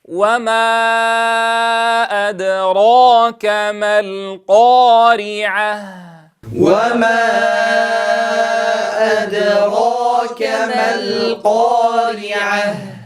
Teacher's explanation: وما، انتبهوا إلى ضم الشفتين